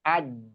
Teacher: disukun misalnya aj sering keluar hamesnya padahal dia enggak hames